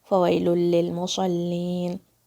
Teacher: صاد کو بھاری اور صاد کے جو آس پاس لیٹرز ہیں ان کو بھاری نہیں کرنا ہے